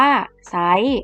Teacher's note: อ่านออกเสียงเฉพาะพยัญชนะต้นไม่อ่านออกเสียงตัวควบกล้ำ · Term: คำควบกล้ำไม่แท้